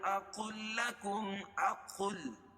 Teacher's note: قاف کو لام میں ملائیں گے کیونکہ دوسری والے لام پر تشدید ہے اور یہاں لام کا لام میں ادغام ہو جائے گا